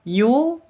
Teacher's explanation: mad asli panjang dua ketuk karena wau sukun